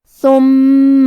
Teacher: کلمت ثم میں حرف الثا کی ادائیگی زبان کے سر اور اوپر والے دانتوں کے اندرونی کناروں سے ہے. حرف المیم پہ تشدید ہے لہذا ہمیں یہ حرف کو 2 حرف کے برابر پڑھنا ہے.